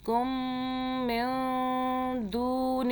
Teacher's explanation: کم کم، آگے نون ساکن کا قاعدہ دیکھیں، اوپر جزم ہے تو چھوٹی سی دال، اس نون ساکن کے آگے دال اخفا کا حرف آ رہا ہے، اس لیے یہاں ہم اخفا کریں گے یعنی کہ نون کو ہم چھپا کے پڑھیں گے اس نون ساکن کو